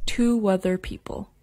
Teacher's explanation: linking words with the WA sound happens even if there isn't a W letter in the spelling